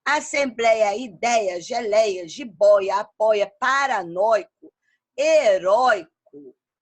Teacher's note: as paroxítonas de pronúncia aberta, que formam ditongos. Ei e oi. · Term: ditongo aberto